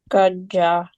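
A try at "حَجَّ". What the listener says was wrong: It's ha. Hajja.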